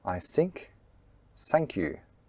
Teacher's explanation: Native Mandarin speakers often mispronounced the th as an S